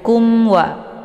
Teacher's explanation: mimnya dibaca jelas, cukup ditekan saja. Kumwa, ya, tidak perlu ditahan atau dibaca dengung. Wa dibaca pendek, kemudian anni di sini ada nun yang bertasydid. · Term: izhar syafawi, idhar syafawi